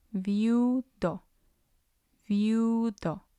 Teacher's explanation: And we have, on the second syllable, we have I and U. They're both weak vowels, and the stress will fall on U because it's the last one.